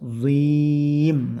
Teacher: ujung lidahnya ditempelkan di dua gigi seri atas zim Nah dengan disertai pangkal lidahnya terangkat zim panjangkan enam harakat ini namanya Mad Arid l lisukun panjangkan